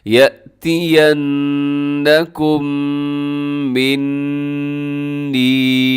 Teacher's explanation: یہاں میم مشدد بھی ہے اور نون مشدد بھی ہے تو دونوں میں غنہ کرنا ہے